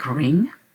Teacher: la langue doit remonter jusqu'au fond de notre palais et puis se refermer voilà après on ne prononce plus rien on s'arrête à et